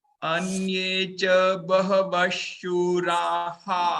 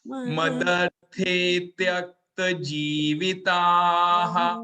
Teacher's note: विसर्ग को हा बोलिए, हा